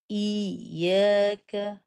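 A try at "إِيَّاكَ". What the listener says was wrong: Jangan tahan. Jangan stop suara.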